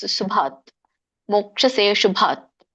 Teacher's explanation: ಶುಭಾತ ಅಂದ್ರೆ ಮತ್ತೆ ಅ ಕೂಡುತ್ತೆ, ತಪ್ಪಾಗುತ್ತೆ.